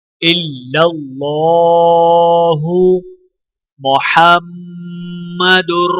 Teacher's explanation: میم مشدد ہے تو میم پر غنہ کیا جائے گا